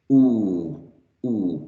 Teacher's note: So ooh right here is articulated with the jaws very close together and lips closely rounded and slightly protruded